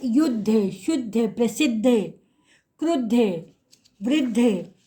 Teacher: इसमें द और ध संयुक्त है। आपको उच्चारण से लग रहा है कि द जो है वो बिना स्वर के है और ध के साथ स्वर जुड़ा हुआ है। अब इसका जब हम वर्णों को अलग करेंगे तो ये होगा द हलंत जोड़ ध हलंत जोड़ अ। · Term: संयुक्त व्यंजन